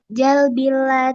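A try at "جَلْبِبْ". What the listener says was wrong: Akhirannya huruf. Akhirannya huruf ba. Bukan jalbil, jalbib, jalbib.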